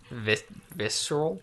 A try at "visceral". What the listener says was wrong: Visceral. You don't pronounce the C.